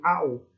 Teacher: Porque não vai ocorrer a perda de fonema, ou seja, som. Quando eu pronuncio ao, eu consigo identificar tanto o som do a como o som do o. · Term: combinação